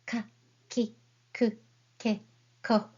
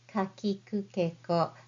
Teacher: Let's practice reading Kagyo Hiragana. You don't need to aspirate too much like ka, ki, ku, ke, ko, but just say softly